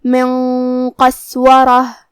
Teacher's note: کلمت قسورہ میں سین کو ہم ہمزے سے پڑھیں گے، را پہ زبر ہے تو ہمیں را کو موٹی آواز میں پڑھنا ہے. آخر میں یہاں تا پہ ہم روکیں گے تو اس پہ ہاتھ سے روکیں گے.